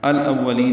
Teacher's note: واو کو جلدی ادا کریں گے ہونٹوں کی نا تمام گلائی سے، لام کو باریک پڑھیں گے، لمبا کریں گے، لین وقفاً یہ لمبا کر دیں گے، مد عارض للسکون بنائیں گے۔ · الاولین یہ لام پڑھا جا رہا ہے اظہار قمری حمزہ کی وجہ سے، حمزہ کو واو سے ملائیں گے، واو کو جلدی ادا کریں گے ہونٹوں کی نا تمام گلائی سے، لام کو باریک پڑھیں گے، لمبا کریں گے